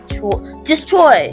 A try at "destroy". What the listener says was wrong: Beautiful. Look at you.